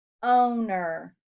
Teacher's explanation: Owner has a long O in the first syllable.